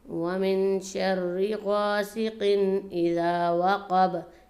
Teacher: اس میں بھی من پر تھوڑا سا غنہ کیا جائے گا، ناک میں آواز رکھی جائے گی